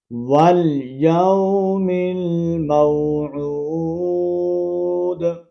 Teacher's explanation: جب واو ساکن سے پہلے پیش آ جائے، اب دیکھیں واو ساکن سے پہلے پیش ہے، ٹھیک ہے، اور آخر میں دال کا قلقلہ آپ نے کرنا ہے